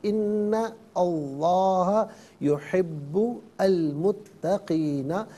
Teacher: ان میں نون پر جو زبر ہے اسے لفظ اللہ کی لام کے ساتھ ملائیں گے، درمیان سے حمزہ یعنی الف کو حذف کیا جائے گا